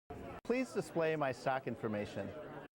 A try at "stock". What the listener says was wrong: Sounds like he's saying sock. I can't hear the T in the intonation there.